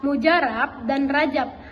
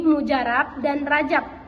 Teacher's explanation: fonem B dilafalkan menjadi P